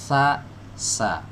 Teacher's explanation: Kalau huruf sa nempel ke ujung gigi seri atas.